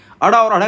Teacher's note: जीभ हमारे मुख को दो बार स्पर्श करती है, इसीलिए इसको द्विस्पर्शी व्यंजन के नाम से जानते हैं